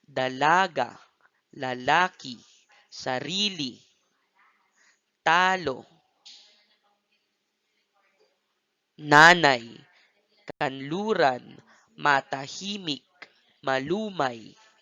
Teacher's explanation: Halimbawa ng malumay, dalaga, lalaki, sarili, talo, nanay, kanluran, matahimik, malumay. Kung inyong mapapansin, ang stress o diin ay nasa ikalawang pantig ng bawat salita.